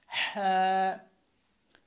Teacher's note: হা হচ্ছে এই হলকের মধ্যখান থেকে একটা চাপ দিবেন